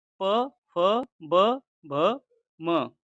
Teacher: जिन वर्णों का उच्चारण होठों से होता है उन्हें ओष्ठ्य व्यंजन कहते हैं।